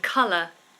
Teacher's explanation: sometimes we have an O-U-R ending, like humour. So again, that's a schwa ending